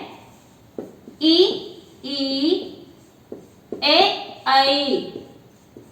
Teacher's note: वो स्वर जिनका उच्चारण करते समय हमारी जिह्वा का अग्र भाग सक्रिय रहता है। इसके अंतर्गत जो स्वर आ जाते हैं वो है ई, ए, ऐ। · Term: अग्र स्वर